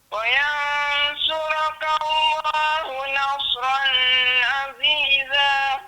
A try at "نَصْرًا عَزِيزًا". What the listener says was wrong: nasran tu dia hukum dia izhar. Jadi dia tak dengung kat situ. Wa yansurakallahu nasran aziza. Nasran jelaskan fathatain tu.